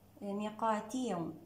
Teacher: من صفات الواو اللينة هنا رخوة، مستفيلة، مجهورة، منفتحة، مصمتة، وبها صفة اللين